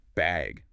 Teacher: do you need a bag or even just bag with a rising tone?